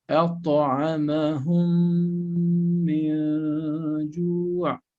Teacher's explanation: we are reciting them with mim mushaddada, both